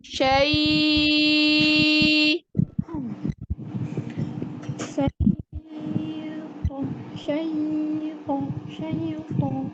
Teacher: syai itu dari al-jawf, dari rongga tenggorokan lanjut ke rongga mulut. Jadi nggak ada mampir ke hidung. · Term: huruf lin